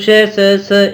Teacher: मुंह से निकलने वाली वायु जो है वो संघर्ष करती है और गर्म हो जाती है, इसलिए हम इसको उष्ण भी कहते हैं।